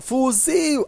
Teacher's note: Eu tenho a palavra fuzil, observa, fuzil, a sílaba tônica é a última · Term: oxítonas